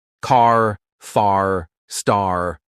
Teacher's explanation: British people say car like ca, but Americans, oh no, they stretch that R sound like this.